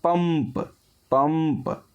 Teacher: पंप में आधा मा आता है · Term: अनुस्वार